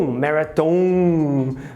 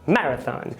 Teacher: Na palavra marathon, ele se espelha na forma do português de dizer maratona e coloca a sílaba final no tom, marathon, porque no português seria mais ou menos assim. E o preconizado, recorrente no inglês, é que a sílaba primeira seja a tônica